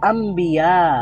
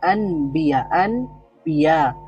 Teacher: তানভীনের পরে বা থাকে এজন্য এটাকে বলা হয় ইকলাব মানে হলো ন সাউন্ডটা পুরাই চেঞ্জ হয়ে ম হয়ে যাবে ন টা হয়ে যাবে ম · মূলত নবী এর বহুবচন হচ্ছে আনবিয়া, আনবিয়া। তো আন ছিল, তো নুন সাকিনের পরে আবার বা আছে, তো এই জন্য ন সাউন্ডটা ম সাউন্ড হয়ে গেছে, আম্বিয়া হয়ে গেছে।